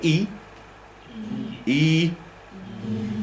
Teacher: the French vowel E is our vowel E, but with rounded lips. So if you say E like that, and then keep saying E, but gradually round your lips like this, you go E, you end up at that French vowel sound.